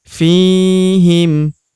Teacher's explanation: huruf fi kita panjangkan dua harakat